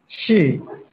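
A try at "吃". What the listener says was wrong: Bukan shi ya. Jadinya ada C-nya.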